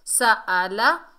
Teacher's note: سین کو سختی اور سیٹی سے ادا کریں گے۔ سألہ، ہا کے اوپر پیش، آگے میم ساکن ہے، ہا کو میم سے ملائیں گے، ہا کو بھاری ساؤنڈ سے ادا کریں گے، ہم، سألہم، میم ساکن کے بعد با اور میم کے علاوہ جو بھی حرف آ جائے تو میم کا اظہار کیا جاتا ہے۔